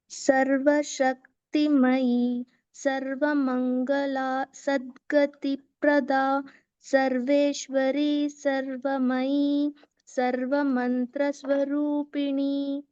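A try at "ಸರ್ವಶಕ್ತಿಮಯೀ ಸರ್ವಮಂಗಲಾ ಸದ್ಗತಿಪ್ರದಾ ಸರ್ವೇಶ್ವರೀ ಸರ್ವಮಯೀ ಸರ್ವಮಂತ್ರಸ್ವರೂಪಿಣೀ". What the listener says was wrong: ಉತ್ತಮ ಭಗಿನಿ there ವರ್ no mistakes ಧನ್ಯವಾದ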